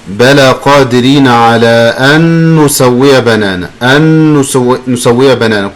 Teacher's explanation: Combine noon with noon, just like one noon.